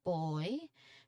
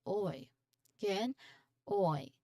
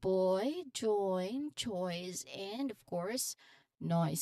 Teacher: So this is a gliding vowel that starts with O sound then like door like and glides towards the short E sound.